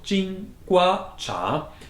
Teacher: Jingua is two first tones